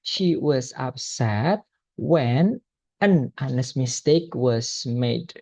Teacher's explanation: ketika dia dibaca itu h-nya voiceless, tidak dibaca. Berarti artikelnya berubah menjadi an.